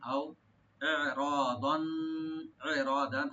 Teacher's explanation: আও এখানে হরফে লিন, আও ইরাদান, ইরাদান, হামজা এবং আইন দুটো একটু রাইট দিতে হবে। হামজা গলার শেষ থেকে আসবে, আইনটা আসবে গলার মধ্যখান থেকে। রটাকে ডিপ করে পড়তে হবে।